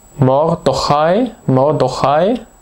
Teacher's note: Die Silbe am Anfang ist geschlossen. Sie hört nämlich mit einem Konsonanten auf, mit dem R. Sie ist unbetont.